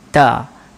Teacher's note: dia akan mengeluarkan bunyi yang nipis sahaja · Ada sedikit keluar udara, itu adalah hams.